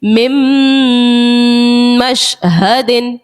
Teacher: نون ساکن کے بعد جو ہے وہ میم ادغام کا ہے، حروف یرملون کا ہے، ادغام کا قاعدہ لگ گیا اور غنہ یہاں پر کریں گے